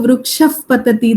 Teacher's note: If you have a visarga following pa or pha, as I told you, vrukshaf patati, there you have the fa.